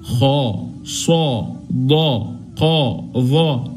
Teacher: وهو التفخيم والترقيق التفخيم مجموع في قول العلماء خص ضغط قظ اي حرف من الحروف اللي ذكرناها الان هنقرا هنمل الفم واحنا بنقراه